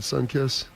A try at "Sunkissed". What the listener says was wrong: Did you put the T on the end of that? It's sun-kissed, right? Sun-kissed?